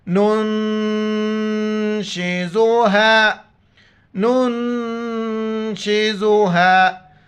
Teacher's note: نون ساکن ہے، ناک میں آواز پیدا کرنی ہے، نون کو نون کے ساتھ ملائیں گے